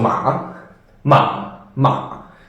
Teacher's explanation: go down but then go a little bit up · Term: the question one